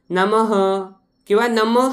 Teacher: या विसर्गांचा उच्चार आपण ह सारखा पण करू शकतो